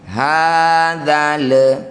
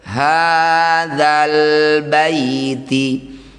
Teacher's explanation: Lam sukun baca dengan jelas jangan tawalud atau diseret-seret bunyinya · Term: izhar qamariah